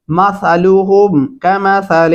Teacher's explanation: سا کو نرمی سے ادا کرنا ہے دونوں دانتوں کے نیچے زبان کی نوک آ جاتی ہے